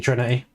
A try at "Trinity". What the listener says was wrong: You've forgotten how to pronounce your T's. It's a Trinity. It's got a T on the end. Trinity. Trinity.